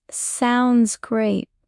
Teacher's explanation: Connect sounds and great. So, it's sounds great with no pause.